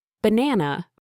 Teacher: The stress falls on the second syllable, banana.